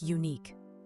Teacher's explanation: Unique starts with a Y sound, which is a consonant sound.